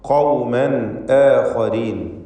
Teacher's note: തൻവീനിന് ഇൽഹാർ ഹൽഖി നൽകി മണിക്കാതെ ഉച്ചരിക്കണം. ശേഷം ഹംസ വന്നതുകൊണ്ട് ഖൗമൻ ആഖരീൻ, ഖാഇന് തഫ്ഖീം കൊടുക്കുക, സ്വരഭാരത്തോടെ ഉച്ചരിക്കുക.